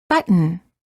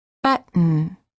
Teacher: Hold the T as in but, and then add an N without releasing the tongue from the gum ridge. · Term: Held T